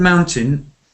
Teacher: it's ow at the beginning, and the second syllable is unstressed, so you can drop the second a bit.